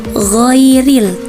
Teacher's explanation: Padahal langsung saja membacanya ghoiril tidak perlu ditambahkan huruf e-nya